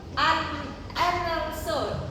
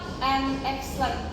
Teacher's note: The final D in the word and is almost always dropped in everyday spoken English. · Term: D deletion